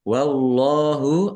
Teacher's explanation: Allahnya dibaca tebal karena harakat di depannya fathah.